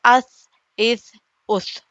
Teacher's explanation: تو ثنایا الیہ یہ اوپری دانت کا سرا، سامنے کے 2 دانتوں کا، اور زبان کی نوک، یہ یہاں پر لگنے سے اس، اس، اس، دیکھیے کر کے، از، از، از، از، از، از، یہ ہو گیا 3 حروف کا مخرج۔